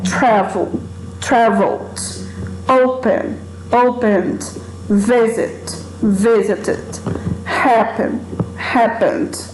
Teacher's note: Então, quando você pronuncia esses verbos aqui, vocês vão ver que a sílaba tônica é a primeira e não a segunda.